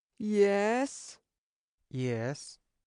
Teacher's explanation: That is the third tone, falling and rising · That is the third tone in Chinese, a falling, rising tone, the exasperated teacher's tone.